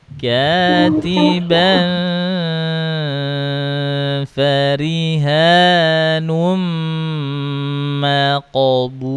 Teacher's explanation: Itu ada tanwin tuh. Tanwin bertemu dengan huruf fa. Dengung juga.